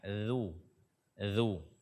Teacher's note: makhraj ujung lidah bersentuhan dengan ujung gigi seri atas kita